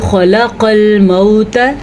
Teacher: خا کو پر پڑھیں گے اور قاف کو بھی پر پڑھیں گے۔ پر کا مطلب ہوتا ہے موٹا کر کے پڑھنا